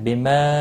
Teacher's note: مد منفصل ہے، تین الف کے برابر کھینچ کر پڑھنا ہے